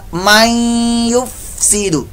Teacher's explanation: नून साकिन के बाद या हरूफ यरमलून में से आ गया, लिहाजा यहाँ पर इदगाम माल गुन्ना का कायदा, यानी गुन्ना करके हम पढ़ेंगे।